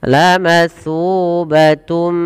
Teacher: Maka ketika ada huruf idgham bigunah datang setelah huruf yang berharokat tanwin an, in, un, atau sebelumnya huruf nun sukun, maka masukkan kepada huruf mim dan kemudian ditahan dengan gunnah. La matsubatum, sepanjang 2 harokat baru dilepaskan. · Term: idgham bi gunnah